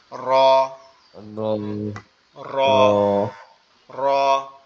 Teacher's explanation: র একটু কম্পন আওয়াজ, মানে একটু ভাইব্রেশন হবে।